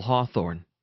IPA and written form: ˈhɔːˌθɔrn (Hawthorne)